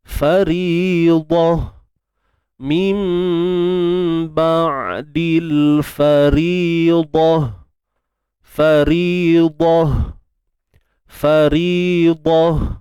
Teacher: di hujung tu ada huruf ta, yang mana kita matikan dia dengan bunyi huruf ha.